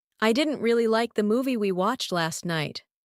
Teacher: Most likely you caught didn't, like, movie, watched, and night. These carry the main meaning. The rest help connect the ideas, but aren't as important for basic understanding. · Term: stressed words